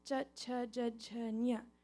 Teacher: That comes from the palatals. It's coming from the palate.